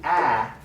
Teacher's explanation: unobstructed it's not blocked it freely passes through the mouth and the path through the mouth is wide because the tongue is lowered · the ah in sad is a very open vowel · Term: open vowels